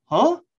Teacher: you know that's a question because i have a rising intonation at the end of that